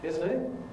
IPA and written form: ˈɪzən ɪʔ (isn't it)